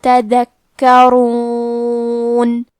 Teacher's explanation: کلمت تذکرون میں حرف الدال ہے، دال کی ادائیگی زبان کے سر اور اوپر کے دانتوں کے اندرونی کناروں سے ہے۔ حرف الکاف پہ تشدید ہے، لہذا 2 حرف کے برابر کاف کو پڑھنا ہے۔